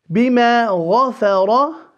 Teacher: The meme holding a fatha followed by an alif, only 2 vowel counts. غفر. غا, the ghain full, the fa empty, and the ra full.